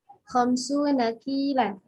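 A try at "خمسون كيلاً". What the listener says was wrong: Masya Allah.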